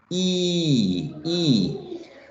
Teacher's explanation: when you produce e the lips are tense and spread tense and spread because there's tension right they are tied on